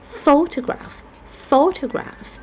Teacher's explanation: for Photograph we have the first syllable to be stressed